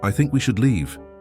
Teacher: No upspeak. That rising inflection at the end of statements.